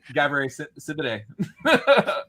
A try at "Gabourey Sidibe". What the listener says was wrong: Gabourey Sidibe. Sidibe. The D goes before the B.